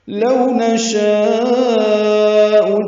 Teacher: لو اولین نشاء لمبا کریں گے، مد متصل ہے